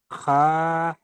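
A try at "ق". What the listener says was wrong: খা নয়, ক। অক্ষরটি উচ্চারণ করবার সময় মুখ গোল করে পড়তে হবে, স্টার চিহ্নওয়ালা অক্ষর। ক, একালি টান দিয়ে পড়তে হবে।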